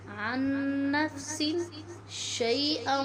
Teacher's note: نون ساکن کے بعد حرف یرملون میں سے حرف نون آگے ہے، یہاں پر ہم غنہ کے ساتھ ادغام کریں گے